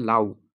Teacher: এখানে আ হল পূর্ণ স্বরধ্বনি এবং উ হল অর্ধ স্বরধ্বনি